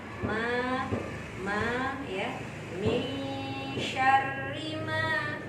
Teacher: Karena fathah diikuti alif ya. Berapa panjangnya? Panjangnya 2 harokat. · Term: mad asli